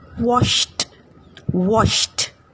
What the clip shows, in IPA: wɒʃt